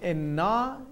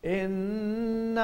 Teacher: anytime noon or mim are mushaddad, they are called ghunna, and you stretch it when you recite it from 2 to 3 second duration